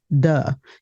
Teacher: A voiced TH, as in the, might be realized as a D, as in do, or a V, as in vase. So the might be pronounced as duh.